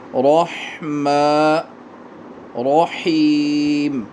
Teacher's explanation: حا کو سیٹی کے ساتھ ادا کریں